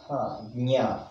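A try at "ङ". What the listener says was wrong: Nya alla. Nga. Why do you go to another alphabet? Ka, kha, ga, gha, nga. Na you are telling. Na is yen. In English, yen it is. No, that's why I'm telling you, it should be pronounced in the Kantasthana. Nga.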